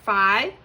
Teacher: The I is at the end of that first syllable, so you're going to make that a long I.